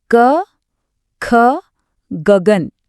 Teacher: कंठ्य मतलब कंठ यानी हमारा गला। तो जिन वर्णों की आवाज सीधे गले से आती है वो कंठ्य हैं। इसमें पूरा क वर्ग आता है। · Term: कंठ्य वर्ण